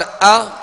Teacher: हमजे का हरकत जो है वो बगैर झटके के मारूफ अदा की जाएगी